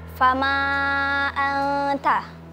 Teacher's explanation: Karena ada nun sukun bertemu dengan huruf ta dibaca samar dan mendengung. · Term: ikhfa hakiki